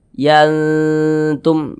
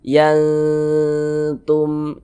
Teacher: Jadi makharijul huruf nun dengan huruf ta ini dia dekat, maka dikatakan akrob. Maka cara membacanya dibaca samar dan juga berdengung. Yang dibaca samar itu apa? Bunyi nun sukunnya dibaca samar.